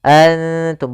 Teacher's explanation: ikhfa itu menyamarkan huruf kepada huruf setelahnya, yaitu nunnya disamarkan kepada huruf ta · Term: ikhfa aqrab